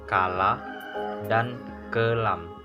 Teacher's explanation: Alofon K merupakan bunyi lepas jika terdapat pada awal suku kata, contohnya kala dan kelam.